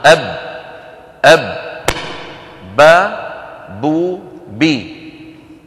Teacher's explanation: مخرج الباء كما نرى على اللوحة التي أمامنا بانطباق الشفتين على بعضهما، أب أب، با بو بي. طبعا ما معها من الأنف شيء، ما معها من الخيشوم شيء